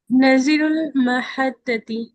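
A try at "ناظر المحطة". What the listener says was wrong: नादिरुल महत्ता ठीक है, थोड़ा नून को ना खींच के बोली, नादिरुल महत्ता।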